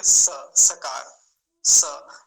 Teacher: इसका उच्चारण जैसे होता है वैसे ही करेंगे स सकार स हमारे दांत मिलेंगे दांतो के बीच में से वायु बाहर आएगा और फिर सकार का उच्चारण होगा यहां से ठीक है और जैसे जैसे आगे आएगा मैं बताता